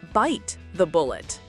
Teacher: in the idiom bite the bullet, the stress is on the first word, bite the bullet. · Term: word stress